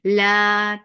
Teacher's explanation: 2 counts long without going into your nose